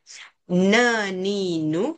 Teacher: tempat keluarnya semua hujung lidah dengan langit-langit, cuma sifat huruf tu berbeza ya.